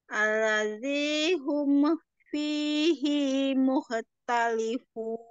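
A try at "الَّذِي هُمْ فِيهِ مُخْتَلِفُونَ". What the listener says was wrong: Hinya bukan panjang lagi.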